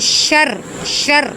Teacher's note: را کو پر نہیں پڑھیں گے، اس کے نیچے زیر ہے اور اس را کو دبا کر پڑھیں گے